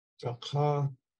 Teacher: The ta isn't stressed, so it's low tone.